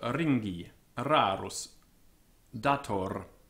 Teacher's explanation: the final R should be fully sounded